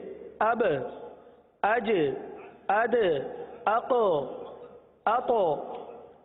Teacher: ये आवाज का जुम्बिश होकर पलटना, जुम्बिश और हरकत, ये कलकला के खास बाने हैं